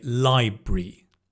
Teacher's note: I'd kind of swallow the A and the R and just have library.